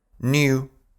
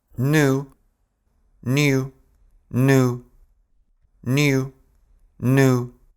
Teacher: В британском акценте после «н» идет звук «и», который часто называют «йод». А вот в американском акценте «йод» выпадает.